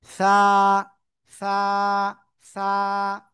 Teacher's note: জিহ্বার আগা উপরে দুই দাঁতের আগার সাথে লাগাবেন, লাগিয়ে নরম করে হালকা বাতাস বের করে উচ্চারণ করতে হবে।